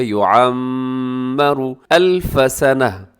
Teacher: لو یعمر الف سنہ، یعمر اس کے اندر کیا ہے کہ میم مشدد ہے تو آپ یہاں پر غنہ کر دیجیے گا